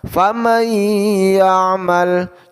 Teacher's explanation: Cara mendengungkannya ialah selama satu alif atau dua harokat panjangnya. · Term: idgham bi gunnah